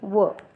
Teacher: याच्यात दात आणि ओठ दोन्हीचा उपयोग होतो आणि याचं एकच उदाहरण आपल्याला देता येईल ते म्हणजे व दंत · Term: दंतोष्ठ वर्ण, दंतोष्ठ्य वर्ण